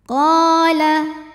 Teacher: Qala, hukum tajwidnya adalah mad tabi'i zahiri, sebab ada alif yang sebelumnya berharokat fathah. Cara bacanya, qaf dipanjangkan 2 harokat.